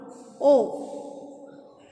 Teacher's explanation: O is rounded and it is in the back. O back. O is in the back and it is open.